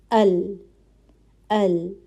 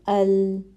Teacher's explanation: اچھا، اب دیکھیں کیا ہو رہا ہے، ایک دم رک بھی نہیں رہی، ہم ال نہیں کر رہے، ٹھیک ہے، ال، اور نہ بہت زیادہ چل رہی ہے، ٹھیک ہے، جیسے شین کے اندر چل رہی تھی اش، ایسی بھی نہیں چل رہی کہ چلتی جا رہی ہے، ٹھیک ہے۔ تو یہاں پہ کیا کوالٹی ہے کہ آواز تھوڑی چلتی ہے، ٹھیک ہے، دونوں کے درمیان کی چل رہی ہے، توسط کی کوالٹی ہے یہاں پہ۔